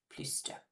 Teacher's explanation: So we're going to say plus, we're going to pronounce the S here.